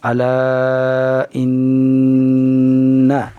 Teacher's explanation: نون پر تشدید ہونے کی وجہ سے نون کا غنہ کو جو ہم ادا کریں گے ناک کے بانسے سے ادا کریں گے۔ الا ان 1 سیکنڈ ناک کے بانسے میں آواز کو گھمائیں گے، اس طرح سے پھر ادائیگی درست ہوگی۔